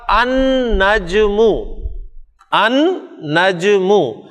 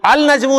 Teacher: اب چونکہ نون شمسی حرف ہے تو لام پروناؤنس نہیں ہو رہا، بلکہ آپ حمزہ کو ڈائریکٹ نون کے ساتھ ملا کر پڑھ رہے ہیں، اور لکھنے میں آپ دیکھ رہے ہیں کہ نون پہ شد ڈالی ہوئی ہے، اس لیے ہمارے لیے پڑھنے میں کوئی مشکل نہیں ہے۔